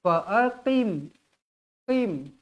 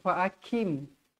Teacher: Huruf qaf tak berangin.